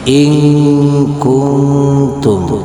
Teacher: suara nun mati suara tanwin samar bacaannya samar di antara suara idhar dan suara idgham tercampur antara izhar dan idgham. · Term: ikhfa